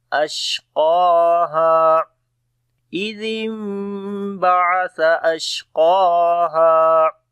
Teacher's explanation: شین کے اوپر صفت تفشی اور ہمس ہوگی